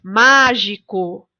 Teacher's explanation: Na palavra mágico, a sílaba tônica é o má.